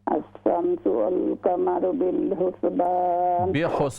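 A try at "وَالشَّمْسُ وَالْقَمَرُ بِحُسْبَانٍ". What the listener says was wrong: बिल नहीं है, अश-शम्सु वल क़मरु बिहुस्बान। बिल नहीं है, बा ज़ेर बी हा, उसके बाद बिहुस्बान जी।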